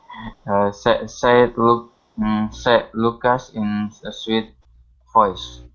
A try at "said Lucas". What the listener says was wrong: Okay, now with said, make sure to pronounce the D. Instead of said Lucas, said. Said Lucas.